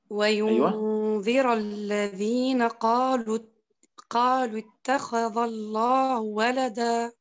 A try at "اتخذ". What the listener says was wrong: أنت تفخمين الذال فقط.